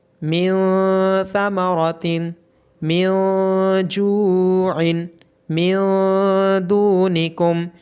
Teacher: تو آپ کی زبان تالو کے ساتھ ٹچ ہوتی ہے، لیکن جب ہم اخفا کریں گے تو ایسی صورت میں آپ کی زبان کہیں بھی ٹچ نہیں ہوگی، بلکہ ناک میں سے آواز آئے گی اور ناک میں آواز چھپ جائے گی۔ فَمَن تَبِعَ مِن ثَمَرَةٍ